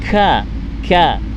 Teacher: Kemudian huruf kaf. Huruf kaf makhrajul hurufnya adalah lidah paling dalam itu menempel di langit-langit bagian tulang.